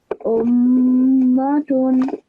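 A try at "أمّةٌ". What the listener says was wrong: Again, you have to hold the tanween as well. Ummatun.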